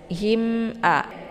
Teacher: ini ada mim sukun bertemu dengan Hamzah cara bacanya jelas bunyi mimnya ya him jelas bunyi m-nya him a ya ditekan mimnya him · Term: izhar syafawi